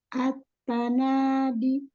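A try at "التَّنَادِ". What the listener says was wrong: Di, jangan ada hamzah. At-tanadi.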